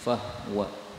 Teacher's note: fahuwa sebagaimana biasa haknya bisa disukun menjadi fahwa